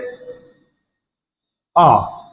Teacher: विवर्त में याद रखना मुख द्वार पूरा खुलता है, पूरा। जैसे आ, आपने मुख द्वार आ, पूरा का पूरा मुंह खुलेगा।